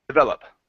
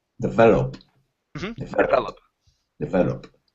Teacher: the stress is in the middle there